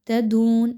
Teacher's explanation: واو مدہ ہے، 2 حرکات کے برابر اس کی ادائیگی رکھیے